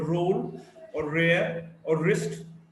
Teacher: R is a voiced alveolar approximant.